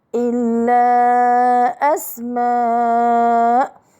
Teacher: هنا مدان، الأول منفصل والثاني مد متصل، وكلاهما من المد الفرعي بسبب الهمزة، وكلاهما 4 أو 5 حركات، لكن المد المتصل واجب المد.